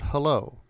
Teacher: The voiceless glottal fricative is found in English in the word hello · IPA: [hɛlo]